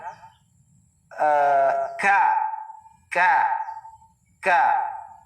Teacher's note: ang lugar kung saan maglabas ang kaf ay sa aqsal lisan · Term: maliit na kaf